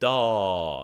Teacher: if you add the gangster G on the end, it extends the A vowel like dah.